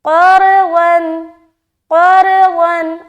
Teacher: قاف حروف مستعلیہ سے ہے اسی لیے موٹا، اور را کی ادائیگی کیوں موٹا ہوگا؟ کیونکہ را کے اوپر سکون ہے اور اس سے پہلے زبر ہے، اس لیے را کو ہم موٹا ادا کریں گے · آگے قرضا، قرضا، قاف را زبر قار کیونکہ موٹا ہے قاف اور رائے ساکینہ سے پہلے زبر ہے، تو دونوں صورت میں دونوں حرف کو ہم موٹا ادا کریں گے۔ قاف حروف مستعلیہ سے ہے اسی لیے موٹا